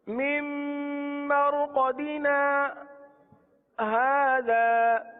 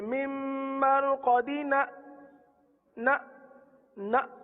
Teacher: ना के बाद आवाज को रोकना है। अच्छा, करते क्या है, यहाँ झटका दे देते हैं ना, जैसे मिम मरकदीना ना ना, तो ना झटका नहीं देना, ना के बाद थोड़ा सा रुक जाए और हाजा पढ़ने। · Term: सत्ता